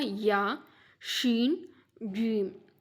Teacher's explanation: இது மூணுமே என்னது? நாவில் நடுப்பகுதியிலிருந்து உருவாகிறதுன்னு சொல்கிறேன்